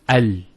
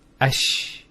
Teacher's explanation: The actual points of articulation of the lam and the sheen are very close to each other.